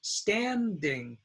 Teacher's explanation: the first syllable is stand and it's stressed standing and so the stressed sound takes the short a ah